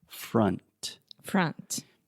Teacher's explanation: yes so again this is the schwa sound freh and then you have that final n sound so the tip of your tongue is touching the roof of your mouth